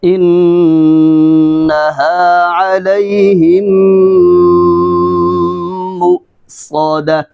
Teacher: مؤصدہ صاد، ٹھیک ہے، موٹا کر کے ادا کریں گے